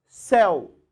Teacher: Céu, uma sílaba só. Uma vogal e uma semivogal. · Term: ditongo